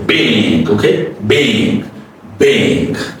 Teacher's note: the B is very plosive, and you get your mouth closed, lips closed, and you say ba, and you say bing.